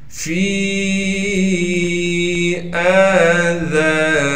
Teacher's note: ذال کے بعد الف ہونے کی وجہ سے ذال کو باریک بھی پڑھیں گے اور ذال کو ایک الف کی مقدار کھینچیں گے اس لیے کہ ذال کے بعد الف مدہ ہے۔ نون کو بغیر کھینچے پڑھنا ہے، ہا کو میم ساکن سے ملائیں گے بغیر غننے کے۔